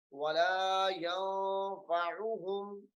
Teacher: بات بھی موٹی ہے اور را کو بھی پر کر کے پڑھنا ہے مَا يَضُرُّهُمْ وَلَا يَنفَعُهُمْ وَلَا يَنفَعُهُمْ. یہاں پہ غنہ ہوگا کیونکہ نون ساکن کے بعد حروف اخفاء آ رہا ہے